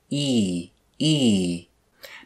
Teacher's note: the back of our mouth e e e you'll notice that there is not a lot of space between the back of our tongue and the roof of our mouth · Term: e sound